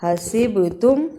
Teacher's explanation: حسبتم با پہ قلقلہ کرنا یعنی حرف کو ہلا کر پڑھنا